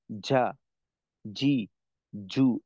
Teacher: এই ধরনের আওয়াজের সঙ্গে একটা বাতাসের মিশ্রণ থাকে